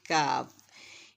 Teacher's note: دا articulation point مخرج of the Arabic letter کاف is the back of the tongue touching the soft palate, upper back part of the mouth